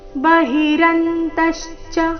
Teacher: ಎಲ್ಲ ಅಕ್ಷರಗಳು ರಸ್ವರ ಮತ್ತೆ ತ ಮೇಲೆ ಆಘಾತ